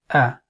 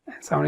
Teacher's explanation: And in Hamzah, what happens is the vocal cords are almost closed when we're pronouncing Hamzah.